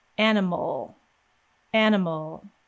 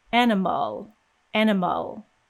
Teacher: my lips start coming out of the way from the m as soon as we release that m sound we're immediately making an l with no vowel sound in between animal animal now if we added a vowel sound it would